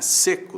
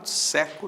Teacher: Timbre é abertura, né? Seco tem timbre fechado, seco tem timbre aberto. Seco, o adjetivo, seco, verbo, né?